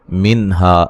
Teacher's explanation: नून साकिन का इज़हार है, हा अलिफ मद्दा है।